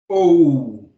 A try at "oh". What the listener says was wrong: No, not ooh. It's not like ooh like goose. It's oh, oh. See my mouth shape. Oh.